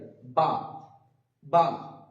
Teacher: বা উচ্চারণ করার সময় আমরা খেয়াল রাখবো দুটো ঠোঁট একসাথে মিলিত হওয়ার পরে ছেড়ে যাবে, বা বা, যেন কোন রকম আলিফের মতো বাতাস না বেরোয়, বা।